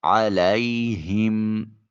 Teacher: ہا کو اقصی حلق سے ادا کرتے ہوئے میم کے سکون کو کامل ادا کریں گے